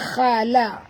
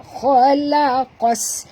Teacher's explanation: Qaf pun tebal. Qaf termasuk dalam huruf isti'la, kha pun sama. Ya, kena baca tebal